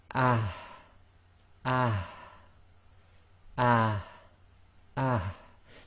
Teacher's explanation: Now the next one is the what I call the soft ha. It's the ha that comes right from the bottom of the throat. Now this one's very difficult because what you've got to do with, especially with the sakin version of this, is bring the sound out but not bring the air right out.